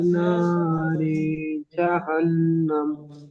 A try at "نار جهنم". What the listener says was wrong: রি টান হয়ে গেছে, রজের রি টান হয়ে গেছে। نار جهنم